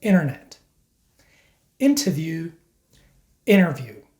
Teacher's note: the silent T after n and this is fairly standard speech